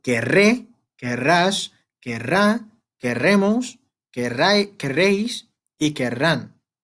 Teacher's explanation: Doble R, the R sound is a bit strong. So, querremos, we put some emphasis on the R.